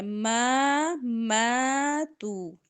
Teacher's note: میم زبر الف ما دونوں لمبے ہوں گے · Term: مد